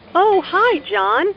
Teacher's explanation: Notice the rising intonation here. is excited to hear from John and is very pleased that he called her.